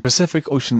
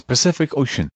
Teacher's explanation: each C is said differently, the first with an S sound, the second as a hard CK sound, and the third with a SH sound